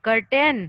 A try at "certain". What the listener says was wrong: कर्टन नहीं कर्टन कहाँ लिखा हुआ है? सर्टेन लिखा हुआ है। सर्टेन बोलते हैं, CERTAIN।